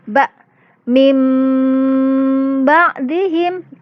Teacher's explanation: Iklab adalah nun sukun atau tanwin bertemu dengan huruf ba, maka bunyi nun sukun atau tanwin diganti, ingat ya, diganti dengan bunyi mim sukun disertai dengung